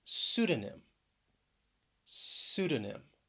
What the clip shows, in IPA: ˈsudə n ɪm